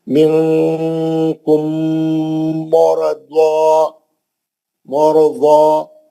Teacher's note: ضاد مستعلیہ کا ہے، موٹا پڑھیں گے، کھڑا زبر ہے، 2 حرکت